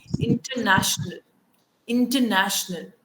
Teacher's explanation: Again, I'm not pronouncing the R sound. What I'm doing instead is I'm putting the sure sound here.